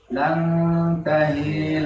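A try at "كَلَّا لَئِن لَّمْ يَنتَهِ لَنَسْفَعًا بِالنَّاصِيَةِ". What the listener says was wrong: Hinya pendek. Yang tahi.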